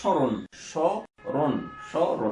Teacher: মাঝখানে যদি অধ্বনি থাকে সেই অধ্বনিটা ও এর মতো হয়ে যায়, সংবৃত ও হয়ে যায়